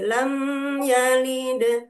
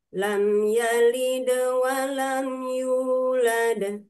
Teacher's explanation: Hukum tajwidnya adalah izhar. Izhar itu jelas, lam, tapi hanya satu ketuk ya. Lam yalid, tidak boleh di lam yalid. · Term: izhar syafawi